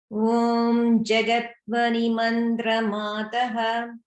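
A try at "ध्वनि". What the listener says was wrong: And notice the dha, dha plus va in dhvani. So that's a mahaprana, the dha. So that's something that you can practice to pronounce as dhvani.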